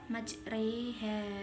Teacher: Majroha ini dibaca majreha karena ini bacaan imalah kubro. Ha bacaan mad tabi'i sebab fathah diikuti alif.